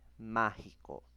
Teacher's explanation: La mayor fuerza de voz, ma, la tilde en la A y por lo tanto es una palabra esdrújula porque lleva el acento en la antepenúltima sílaba